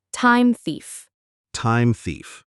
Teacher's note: For time thief, the M in time needs to slide right into the th sound. This can be tricky because th is hard for many learners. · This can be tricky because th is hard for many learners. Do not stop after time. Move your tongue to your teeth for the th. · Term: linking